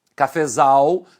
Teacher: o fé, que era a sílaba tônica da palavra primitiva, passa a ser a subtônica na palavra derivada. E o K é a sílaba átona.